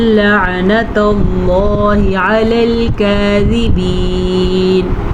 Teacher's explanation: اللہ کا نام پر پڑا ہے کیونکہ اللہ کے نام سے پیچھے زبر ہے